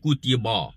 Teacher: Sini kutiba yang kutiba. Ba dinipis saja. Ba istifal infitah. Lidah rata. Mulut dalam keadaan yang muhayyid dengan makna lebar mulut ni dipertahankan.